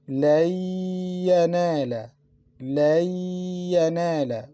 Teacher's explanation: We didn't pronounce letter Noon because we mixed it into letter Ya. We pronounced Ya twice. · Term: Ghunna